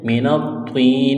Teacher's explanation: طا کو موٹا کرنا ہے، طا کے اوپر تشدید ہے، سختی کریں گے۔ من الطین، یا ساکن سے پہلے زیر ہے، حروف مدہ یا ہے، ایک الف کے برابر کھینچنا ہے